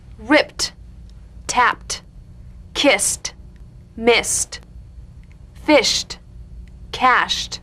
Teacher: ED endings that are really pronounced as T.